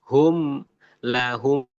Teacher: Mim bertemu mim karena posisinya di bibir dekat.